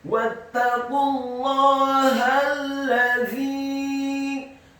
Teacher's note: Lamnya ditasydidkan fathah 1 harokat, dha-nya dibaca tipis tarqiq, lidahnya agak keluar sedikit kasrah 4-6 harokat karena setelahnya ada ya sukun dan ada harokat bendera.